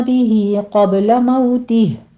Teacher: بھی میں مد صلہ صغرا ہے، موتی میں مد صلہ صغرا ہے، 2 کاؤنٹ کر لیجئے